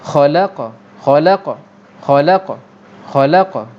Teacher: Bila qalqalah tu berlaku di hujung ayat, bukan tengah-tengah. Bila berlaku di hujung ayat, mana hujung sebutan kita, maka qalqalah ni kategori qalqalah kubra, qalqalah besar, maknanya bunyi dia lebih kuat.